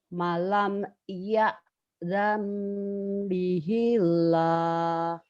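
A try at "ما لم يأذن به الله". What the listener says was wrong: Malam kurang neken terlalu cepat. Malam ya'zam bihillah. Malam ya'zam bihillah.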